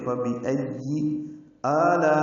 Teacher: لا میں الف مدہ کے بعد حمزہ آنے کی وجہ سے مد متصل ہے، ہم اس کو 4 حرکات سے زیادہ لمبا کرتے ہیں